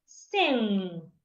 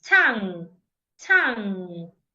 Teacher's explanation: So you need to make sure that when you articulate the sound, the air from your lungs is coming out from your nose. If you should articulate the sound properly, you will feel weight on your [Music] nose. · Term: nasal sound